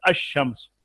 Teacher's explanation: لیکن جب ہم نے لام کو شین میں ملا دیا تو یہ ہو گیا الشمس، یہ ہو گیا اس کے اوپر شد آ گئی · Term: ادغام